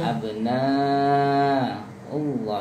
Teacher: Abna Allah itu panjang 6 harokat. Panjang 6 bukan panjang 2.